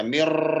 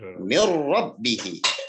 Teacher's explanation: Ra ini huruf idgham bila gunnah. Maka nun matinya masuk tapi tanpa dengung. Jadi jangan dibaca mir.